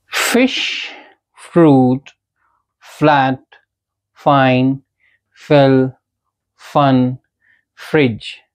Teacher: ये फ वाले साउंड्स जो हैं ये लैबियोडेंटल है, यानी कि जब भी हम फ वाला साउंड प्रोड्यूस करेंगे, हमारे जो अपर टीथ है वो हल्का सा बाइट करने चाहिए हमारे लोअर लिप्स को। अभी तक अगर आप फ बोलते थे जैसे कि फन, फिश, फ्रूट, तो ऐसा नहीं बोलेंगे।